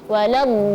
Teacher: ketika masuk ke lam tasydid, kita harus meninggikan suara sedikit supaya terlihat tasydidnya. Waladdallin, ya, jangan waladdallin, enggak.